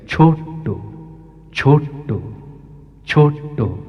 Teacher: ছোতে গলাটা একটু উপরে আছে, ওটে নিচে আসছে, আবার টোতে উঠে যাচ্ছে, ছোট্ট, ছোট্ট, ছোট্ট।